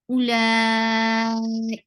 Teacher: ka is short, and the sound is light. · for kasra, give E sound on Hamza, and Hamza is a very sharp and short sound